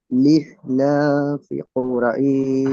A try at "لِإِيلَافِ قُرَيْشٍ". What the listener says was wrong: হামজা উচ্চারণ হচ্ছে না, হামজার উচ্চারণ করেন লি ইলা। পড়ছেন না, হামজাটা টান দেন। ইলা, হামজার নিচে খারাজের, খারাজের হলো ইয়ায় মাদ্দার সমতুল্য, খারাজেরকে টান দেন।